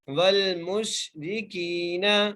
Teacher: کاف کو ہم ایک الف کی مقدار کھینچ کے پڑھیں گے کیونکہ یہاں پر جائے مدہ کا قاعدہ لگ رہا ہے